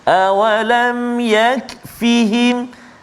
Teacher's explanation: mim mati bertemu dengan ya, jelaskan bacaan kita, jangan lama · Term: Izhar syafawi